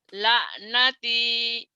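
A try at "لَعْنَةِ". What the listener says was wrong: kurang ainnya ya, tetap ya. La'nati. Kurang neken ya.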